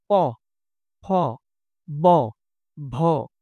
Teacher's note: তো এগুলো হচ্ছে কি ওষ্ঠ এবং এগুলো একই সাথে স্পৃষ্ট ব্যঞ্জন। কারণ এগুলো ওষ্ঠ ব্যবহার করে আমরা উচ্চারণ করে থাকি ওষ্ঠধ্বনি